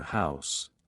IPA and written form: haʊs (House)